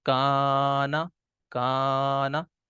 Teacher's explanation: تو دیکھیں پہلے قاف موٹا تھا تو الف بھی اسی جو ہے وہ طریقے سے ہم نے پڑھا، اور کاف جو ہے وہ باریک ہے تو ہم نے الف کو بھی اسی طریقے سے پڑھا